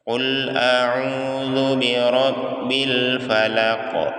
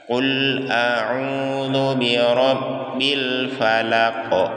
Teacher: ayat terakhirnya ini qalqalah ya, jadi suara terpantul. Karena huruf terakhirnya adalah huruf qaf.